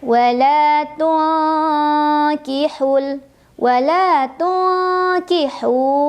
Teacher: Ada ikhfa ab'ad karena ada huruf nun sukun bertemu dengan kaf. Cara membacanya didengungkan ya, disamarkan sambil berdengung. Dengungnya lebih besar karena huruf kaf makhrajnya jauh dari nun.